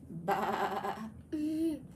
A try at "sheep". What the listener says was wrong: Very good. Sheep could be a little bit lower.